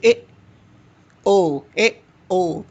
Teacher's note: जिन स्वरों के उच्चारण में मुख्य द्वार आधा बंद रहता है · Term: अर्ध संवृत्त